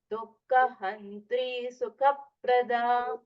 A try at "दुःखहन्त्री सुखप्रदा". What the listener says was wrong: So this kha has to be a Mahaprana. Dukkha-hantri sukha-prada. Little more stress for kha.